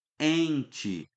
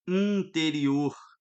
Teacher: O N tá ali para nasalizar o E.